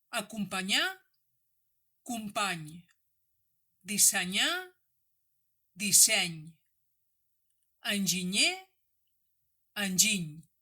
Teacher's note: Per articular correctament el so que correspon a la combinació NY, és a dir, el so de la consonant nasal palatal, has de fer com si volguessis pronunciar una N. Però el dors de la llengua, és a dir, la part central de la llengua, ha de tocar el paladar